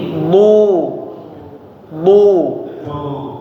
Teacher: Nah, jadi jangan yang di huruf d bersih jangan seperti ada desis ya.